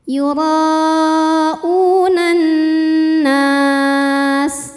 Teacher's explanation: Kemudian an, nunnya gunnah musyaddadah karena nun bertasydid. Cara bacanya dengung, tahan dengungannya kurang lebih 2 harokat.